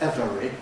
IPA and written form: ˈevəri (every)